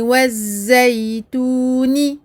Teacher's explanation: Et on fait attention à bien prononcer les ta en ne leur donnant aucun hams. Ici, les ta portent des harakat.